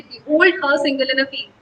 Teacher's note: यहाँ पे unstressed syllable के बाद स्ट्रेस्ड सिलेबल होता है, वहां पे हम उसको आइम्बिक फीट कहते हैं